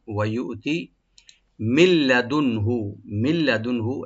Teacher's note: এখানে নুন সাকিনি পরে যেহেতু লাম আসছে, এখানে এদগাম হবে, yani সংযোগ হবে লামের সাথে, তবে গুন্না হবে না। উইদাউট গুন্না আমরা সংযোগ করব, এদগাম করব।